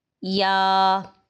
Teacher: یا 2 اس کی شکلیں ہیں، لیکن دونوں کو یا ہی پڑھا جائے گا اور اس کو یاں کر کے نہیں پڑھنا